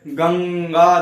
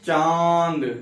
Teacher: देखिए नाक से अधिक अन की मात्रा जो उच्चारण हो उच्चरित हो रही है उसमें नाक से अधिक वायु निकल रही है। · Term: अनुस्वार